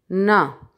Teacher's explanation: زبان کی نوک اوپر تالو کے ابتدائی حصے سے ذرا پیچھے لگا کر، تھوڑا سا پیچھے کی طرف لگا کر نون ادا کیا جاتا ہے